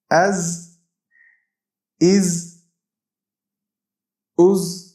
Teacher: زا یہ سیٹی والا حروف ہے، جب ہم اس کو ادا کرتے ہیں تو سیٹی کی طرح آواز منہ سے نکلتی ہے